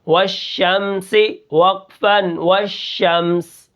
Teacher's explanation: اب یہاں پر دیکھیں واو کو شین کے ساتھ ملا کر پڑھیں گے اور شین کے اندر جو صفت ہے تفشی کی اس کو ہم ادا کریں گے کہ آواز منہ کے اندر پھیل جائے گی